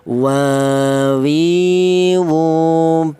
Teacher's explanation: berasal dari kedua bibir yang renggang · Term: huruf wawu